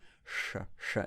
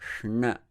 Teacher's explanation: Curl that tongue backward, lift it up, sha. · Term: murdhanya, sha